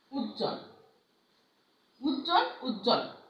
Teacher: আমরা এই যুক্ত ব্যঞ্জন বর্ণের সঙ্গে যে বফলাটা যুক্ত থাকে, যুক্ত ব্যঞ্জনের বফলা অনুচ্চারিত থাকে। · আমরা কিন্তু এই বটা উচ্চারণ করছি না